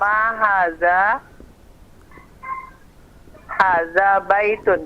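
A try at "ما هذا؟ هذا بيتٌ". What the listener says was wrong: Hada baitun. Mumtaz.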